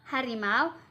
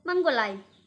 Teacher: dua vokal dalam satu kesatuan waktu seperti AU yaitu pada harimau dan AI yaitu menggulai.